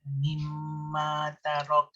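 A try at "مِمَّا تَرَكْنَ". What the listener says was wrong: Dia bunyikan nun. Nun dia kekal sifat dengung. Tarak. Dia ada en. Bawa lidah ke langit-langit. Tarakna. Tarakn.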